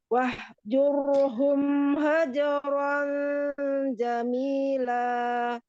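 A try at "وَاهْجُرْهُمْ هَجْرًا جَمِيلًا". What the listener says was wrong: Ketika sukun dia masih tercampur ke hak kecil ya. Wah dari bawah. Wahjur. Ya, jadi dari mana sih makhrajnya? Dari situ juga sifat ketika dia sukun ya. Haknya ketika sukun. Nah, dari mana? Hak itu punya sifat hamas, rokhwah ya, mengalir napas, mengalir suara. Maka difokuskan dari makhrajnya juga gitu ya.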